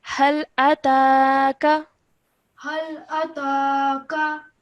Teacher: And then when you read it the second time, you forgot to elongate the ta sound